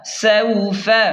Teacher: سین واو زبر سو، یہاں پر واو لین ہے تو اسے جلدی اور نرمی سے پڑھیں. فا زبر فا سوف.